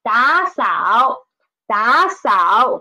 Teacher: there are two third tones, so we should change the former one into second tone.